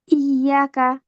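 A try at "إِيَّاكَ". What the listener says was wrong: মাদ আছে। ইয়াকা।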